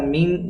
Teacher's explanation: مین یہاں پھر اخفا ہے، چونکہ نون ساکن کے بعد حروف اخفا میں سے شین آیا ہے، اخفا یعنی ناک میں تھوڑی دیر آواز کو چھپا کر پڑھیں گے